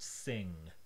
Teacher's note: it's the final sound of the word sing this is voiced velar nasal sing is vibrating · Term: engma